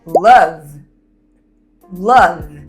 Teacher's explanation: Se você colocar a sua mão nas suas cordas vocais comigo e repetir love, love, perceba que o final de love há uma vibração nas suas cordas vocais. Então isso é o que caracteriza um som sonoro.